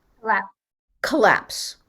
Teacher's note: The first is faster, but the O is a schwa